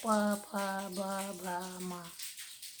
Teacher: इस वर्ण के उच्चारण करने पर हमारे दोनों होठ जो है आपस में क्या होता है, टकराता है, इसलिए इसको ओष्ठ्य कहा जाता है।